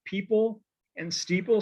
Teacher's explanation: is two syllables like people and steeple so you have the the long e and then the pl sound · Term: double full rhyme